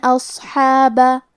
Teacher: صاد ہے اور صاد حروف تفخیم میں سے ہے تو ہم یہ حرف کو بھاری آواز میں پڑھیں گے